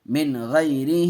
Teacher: کھڑی زیر ایک الف کے برابر کھینچ کے پڑھتے ہیں، یا مدہ کے قائم مقام۔ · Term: یا لین